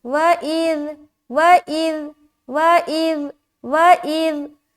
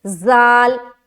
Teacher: ذال کی آواز جو ہے نا نرم اور بغیر سیٹی والی ہے